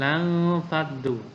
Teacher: nun mati bertemu dengan fa. Itu namanya ikhfa, maka dibaca samar-samar nunnya.